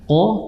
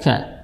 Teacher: Berbeda makhraj walaupun masih di huruf lisan. Qaf di pangkal lidah, sedangkan huruf kaf itu berada setelah huruf qaf ya.